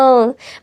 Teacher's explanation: जैसे म, मैंने बोला अ, और म में क्या हुआ, आपकी होंठ भी मिले, आपकी जबान भी इधर से उधर हुई, और आपकी मुंह की जो हवा है वो थोड़ी सी रुकी, फिर वो बाहर निकली। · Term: व्यंजन